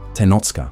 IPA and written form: teˈnot͡ʃkaʔ (Tenochcah)